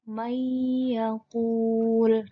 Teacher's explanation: Kita ambil contoh di sini ada nun sukun bertemu ya. Maka cara membacanya melebur disertai dengan dengung. Menjadi bukan man yakulu, tapi may yakul. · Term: idgham bi gunnah